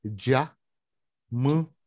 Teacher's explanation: A gente nasaliza. O N vira um tio.